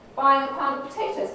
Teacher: the nucleus here is on the stressed syllable of this last important word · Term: end focus